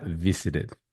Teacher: Porque hay una pequeña reglita que me indica que cuando la T está, entre comillas, atrapada entre dos sonidos vocales, voy a hacer un sonido de la R mexicana o de la R del español